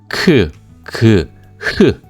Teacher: 그리고 저자음, 중자음, 고자음의 소리의 위치를 느껴보시려면 크, 그, 흐 라고 발음을 해보시기 바라겠습니다. 그러면 목 아래쪽, 목 중간, 그리고 목 위에서 소리가 나는 것을 느끼실 수가 있는데요